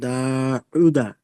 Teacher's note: উল্টা পেশকে ওয়াও মাদ্দার সমান, আর একে এক আলিফ পরিমাণ টান দিয়ে পড়তে হয়।